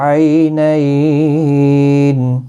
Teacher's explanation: 3 سے 5 الف کی مقدار کے برابر کھینچ کر وقف کریں گے